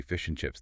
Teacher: The D in and is gone.